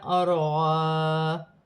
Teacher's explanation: را ساکن سے پہلے زبر ہے تو را موٹی پڑھی جائے گی، الف مدہ میں وقف کی صورت میں کوئی تبدیلی نہیں ہوگی، جیسے لکھا ہے ویسے ہی پڑھا جائے گا۔